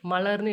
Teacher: மலர்னு நம்ம உச்சரிக்கும் பொழுது அந்த லான்ற சவுண்டு வரும் பொழுது நாக்கு வந்துட்டு மேலே முன்னோக்கி தொடும். அதனால தான் இதை முன்னோக்கு லகரம் அப்படின்னு நம்ம சொல்கிறோம்.